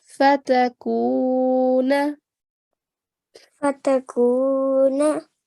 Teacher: we are prolonging the sound out of the kaf for 2 seconds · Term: vowel mud